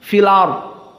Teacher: Hamzahnya hilang. Tidak ada sentuhan hamzah sama sekali. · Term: nakal